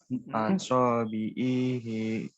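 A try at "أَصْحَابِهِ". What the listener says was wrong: Ainnya dibaca pendek.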